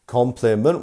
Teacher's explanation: So which part of compliment is our stressed syllable? Can you tell me? It's our first syllable, right?